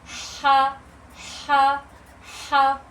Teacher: रगड़ खाती हुई सांस निकलेगी। यानी हल्की हवा का फ्लो आएगा।